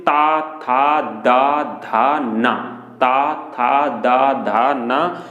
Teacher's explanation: ता वर्ग यानी दंत, यानी ऊपर के भाग के और दांत से छुए जीभ हमारी, जब दांत के जो पिछला भाग होता है हमारा उधर अगर हमारी जीभ छूती है तो हम उसे बोलते हैं दंती